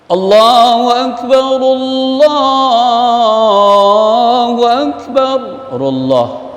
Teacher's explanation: Ra dimatikan karena baca langsung. Jadi kalau dibaca langsung, ru dihidupkan.